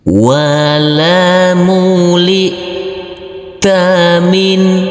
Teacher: Huruf nun sukun yang bertemu dengan huruf H harus kita baca terang atau jelas untuk huruf nunnya.